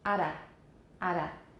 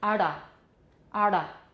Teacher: So listen to a tap and then a flap.